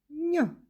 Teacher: приголосний м'який пам'ятаємо що приголосні звуки перед голосним і пом'якшуються